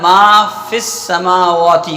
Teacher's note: مگر جب ساکن دوسرے کلمے میں ہو، حرف مد کے بعد ساکن دوسرے کلمے میں ہو تو حرف مدہ گر جاتا ہے